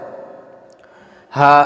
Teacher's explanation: یہ ادا ہوتا ہے حلق کے سینے کی طرف والے حصے سے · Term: چھوٹا ہا